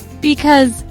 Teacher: two syllables, second syllable is stressed.